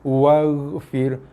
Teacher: Tak perlu sampai memoncong-moncong sampai boleh gantung hanger kat bibir kita, tu tak perlu. Sebab ghain makhraj ni ataupun tempat keluar bunyi ialah di leher, hujung leher. So fokus keluarkan bunyi daripada hujung leher kita tu.